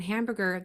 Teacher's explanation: So I also wanted to point out that in hamburger, that A makes that nasally sound that can happen if there is an M or an N after it.